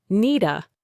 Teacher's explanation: The D at the end of need links directly to the A. So needa becomes needa.